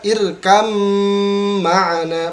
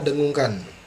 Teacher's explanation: ini sebenarnya dibaca irkam ma'ana, ba-nya dimasukkan ke huruf mim